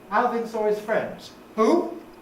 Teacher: the high rise asked for a repetition is what we call a pardon question